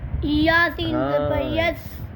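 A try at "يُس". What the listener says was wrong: زبر نہیں ہے بیٹا.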